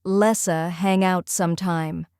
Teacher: Notice how let's and hang link into lessa. The t in let changes to an s sound because of the connection.